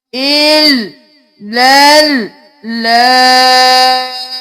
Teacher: 6 الف کے برابر ہم اس لام کو کھینچیں گے